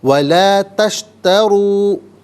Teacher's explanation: وَلَا تَشْتَرُوا، اور یہاں پر چونکہ واو مدہ ہے تو ناظرین ایک الف کی مقدار کھینچ کر پڑھا جائے گا